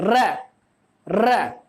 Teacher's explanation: हमारी जीभ सीधे डायरेक्ट अग्रभाग में दांतों के जस्ट पीछे वाला जो हिस्सा उसमें स्पर्श करती है, कंपन करती है ना, मतलब एक दूसरे से टकराती है, कपाती है, तो वह क्या डायरेक्टली हमारा प्रंकपित या लुंठित व्यंजन कहलाता है।